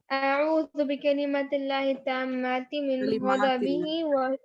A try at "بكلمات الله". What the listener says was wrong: کلماتی الف ہے نا, حرف مدہ ہے نا, وہ بکلمات اللہ والا بکلمتی نے.